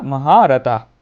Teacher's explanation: শিক্ষার্থীরা তোকে শেষে বিসর্গ থাকার কারণে আমরা উচ্চারণ করব হ। এখানে কিন্তু সম্পূর্ণ হ উচ্চারণ হয় না, এখানে মৃদু হটা উচ্চারণ হয়, অর্থাৎ মৃদু হ উচ্চারণ হয়